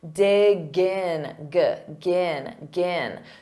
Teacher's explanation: native speakers will link those sounds together. We'll take that G sound and we'll transfer it to the next word.